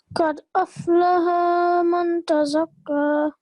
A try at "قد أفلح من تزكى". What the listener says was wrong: Okay, don't prolong ha. Just 1 second long, both lam and ha. قد أفلح من تزكى.